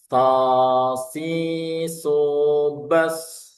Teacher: Nah, yang ketiga, yang kelima ini sifat khususnya ada suara yang tajam yang disebut dengan sofir, yang desisnya yang seperti orang siul